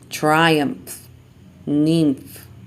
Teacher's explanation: Labiodental nasal instead of bilabial